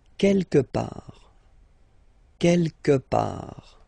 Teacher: Don't pronounce the final T. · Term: final T not pronounced